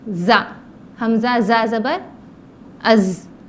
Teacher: زا جو ہے زبان کی نوک نیچے کے دانتوں کے کناروں سے لگانا ہے